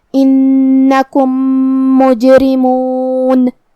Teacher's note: پھر میم ہے کلمت مجرمون میں تو یہاں حکم ہوا ادغام متماثلین صغیر. ہم پہلے میم کو دوسرے میم میں ملا کے ایک ہی میم پڑھیں گے غنہ اور تشدید کے ساتھ